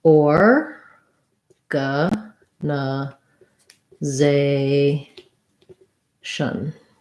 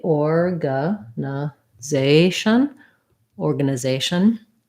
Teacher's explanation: Primary stress on zay. · So in American English, we have an or, then we have a schwa. Secondary stress on that first OR because it's a clear vowel.